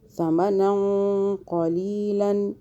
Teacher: زبان کو ہلکا سا باہر کریں اور ادھر اخفاء کریں 2 سیکنڈ کا